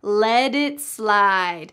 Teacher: Notice the pronunciation at the end of the word let. That t changes to a d.